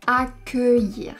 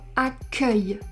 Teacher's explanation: on prononce accueillir avec un E fermé parce que ce n'est pas la dernière syllabe du mot. La dernière syllabe, c'est yir.